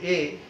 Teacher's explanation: যখন মাঝামাঝি থাকছে এ, তখন হচ্ছে আমাদের মধ্য সম্মুখ